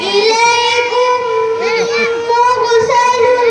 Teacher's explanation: दोनों मीम आपस में मिल जाए इनको गुन्ना के साथ अदा किया जाएगा जिसकी मिक़दार एक अलिफ के बराबर है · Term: इदगाम